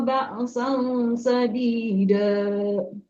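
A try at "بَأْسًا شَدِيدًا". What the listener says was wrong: Jadi syadida dengan sadida itu beda hanya satu huruf, tapi artinya itu beda banget. Jadi jangan sampai ketukar. Ba'san syadida.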